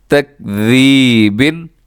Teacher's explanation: اس میں سیٹی نہیں ڈالنی بلکہ یہ دوسرا ذال ہے، اس کو نرمی سے ادا کرنا ہے آپ نے، سیٹی بالکل نہیں ہونی چاہیے